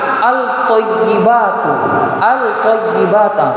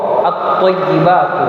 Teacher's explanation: Tapi di alif lam ini alif lamnya tidak disebutkan, tapi diidghamkan ke huruf to